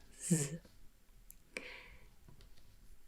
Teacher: this one is a voiced s so z the s sounds for me are always a bit